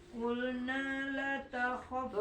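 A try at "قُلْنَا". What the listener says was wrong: panjangin qulna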